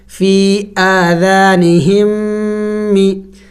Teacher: فی آذانہم می. اور میم مشدد ہے تو غنہ بھی کریں گے. فی آذانہم می.